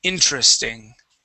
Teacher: Instead of saying interesting, okay, or interesting, all right, the accent is at the very beginning of the word.